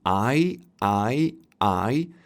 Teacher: you are moving your jaw because you are gliding from [a] to [ɪ] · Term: diphthong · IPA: /aɪ/